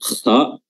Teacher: huruf kha makhrajnya adalah pertengahan lidah, bagian atas tenggorokan, kha atau adanal halq. Ya, sama makhrajnya huruf ghain, ya, kha, dan dibaca tebal juga, sama tebal juga pada huruf ghain.